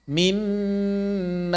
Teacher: Mimmal, gunnah yang sempurna ditahan 2 harokat.